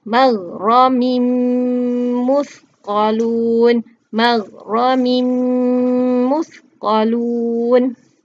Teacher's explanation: Yang pertama, kita kena masukkan huruf min, okey, min itu, bunyi min itu, tanwin itu kita kena masukkan ke dalam huruf mim yang bertanda syaddah selepasnya tu